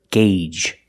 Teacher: The first G is a hard G sound, followed by the long A, gay, and the second G is the J sound, like in juice and jump.